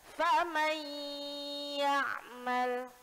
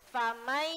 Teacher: Ketika mengucapkan idgham bi gunnah, maka syaratnya juga harus masuk ke rongga hidung.